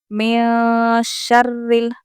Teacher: را کو ہم باریک پڑھیں گے کیونکہ یہ زیر والی را ہے